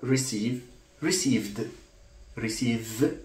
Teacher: receive it's voiced that's why the Ed is pronounced as D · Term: assimilation of voice